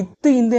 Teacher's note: மேல்வாய் பல்லின் அடியை நாக்கின் நுனி பொருந்துவதால் பிறக்கின்றன